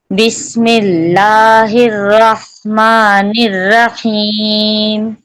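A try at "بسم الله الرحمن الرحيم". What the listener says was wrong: और रा को और एक तकरार दे, एक दे रही ना उसको 2 अर्रहीम, अर्रहीम, मेरी तरफ ये आवाज है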